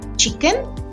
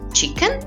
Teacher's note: Even though the tone rises overall, it begins from a slightly lower pitch and that's the step down.